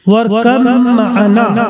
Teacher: با اور میم متحد المخرج ہیں، لہذا ادغام متجانسین ہوگا